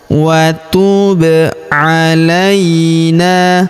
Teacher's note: Huruf ba berharakat sukun kita pantulkan atau kita qalqalahkan.